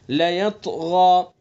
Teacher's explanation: غین کو بھی پر پڑھیں گے چونکہ حروف مستعلیہ میں سے